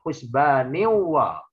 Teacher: Tanwin bertemu wawu menahan melebur harokat tanwin kepada huruf wawu disertai dengungan sekurang-kurangnya 2 harokat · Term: idgham bihunna